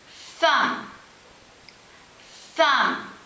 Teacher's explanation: I make the th diagraph Sound by placing my tongue between my teeth and blowing